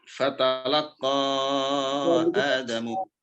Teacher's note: dibaca panjang 4 harokat karena bertemu dengan hamzah di lain kata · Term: mad jaiz munfasil